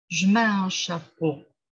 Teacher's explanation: il y a un E qui tombe, en fait, au service du rythme